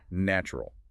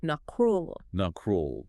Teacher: A beginner reading that word will try to pronounce every single letter, "natural." But in real connected speech, the middle syllable softens entirely. It sounds more like "nacrurl." "Nacrurl." That softening is a perfect example.